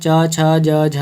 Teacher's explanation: च छ ज झ ये सभी तालव्य व्यंजन हैं।